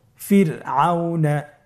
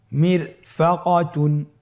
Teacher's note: যর সাকিন তার ডানে এসেছে জের এবং বামে কোন মোটা হরফ নাই এজন্যই রকে পাতলা করে পড়তে হবে